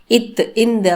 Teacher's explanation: நாக்கோட நுனி மேல பல்லின் அடியை தொடட்டும்